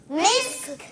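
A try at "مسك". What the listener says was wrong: آخر میں کاف کی آواز آئے گی مسک. ماشاءاللہ, کہ یہاں پر سین کی ادائیگی باریک رہے گا سین.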